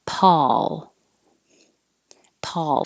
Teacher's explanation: i'm using ah as in hot so my lips aren't rounded